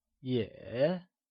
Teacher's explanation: yeah carries the falling rising tone and is pronounced as yeah